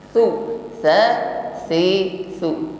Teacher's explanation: tidak dengan sofir atau tidak dengan bunyi desis, bukan yab'asu, su tidak ada desis. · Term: huruf sa